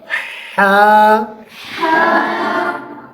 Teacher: हा हलक के दरमियानी हिस्से से निकलता है · پہلے حلق کے درمیانی حصے سے سانس نکالیں گے اور پھر اس سانس کو آواز میں تبدیل کر دیں گے۔ اب میری طرف توجہ کریں، پہلے ایسے سانس نکالیں گے، پھر اس سانس کو آواز میں تبدیل کر دیں گے، حا۔